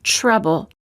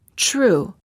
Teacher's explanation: say ch as in chain, but just make the tip of the tongue a bit more tense when it touches the gum ridge and focus on creating a stop of air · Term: almost ch sound